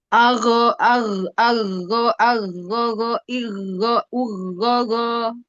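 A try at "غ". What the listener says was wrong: Ini baru ketahuan ketika di ini dia bercampur banget dengan kho. Ago, go, ago, ago, ago, ago. irigo, uri, irigo, urigo, irigo, urigo. Uri. Agho, agho, agho, agho, go, iri, go, uri, go.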